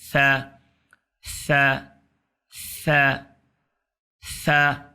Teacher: زبان کی نوک کو سامنے اوپر کے جو دانت ہیں اس کے نیچے لے آئیں